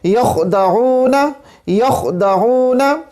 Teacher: اب یخدعون کے اندر یہ خا آ رہے، اور خا جو ہے ہمارے پاس ادنا حلق سے ادا ہوتا ہے، اس کے بعد عین آ رہا ہے، عین جو ہے وسط حلق سے ادا ہوتا ہے